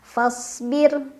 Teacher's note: ro sukun dibaca secara tarqik karena huruf sebelumnya berbaris kasrah jadi tipis tipis itu lidahnya datar aja enggak usah ngangkat